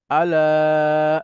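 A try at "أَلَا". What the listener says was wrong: লাতে টান হবে, হ্যাঁ।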